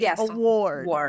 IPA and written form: əˈwɔrd (award)